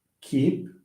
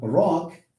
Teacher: In both cases, the k sound is a velar, okay, is a velar, a voiceless velar stop.